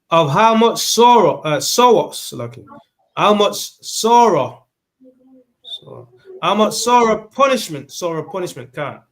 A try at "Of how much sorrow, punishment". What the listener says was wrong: Take your time. Sorrow punishment. You rushing it.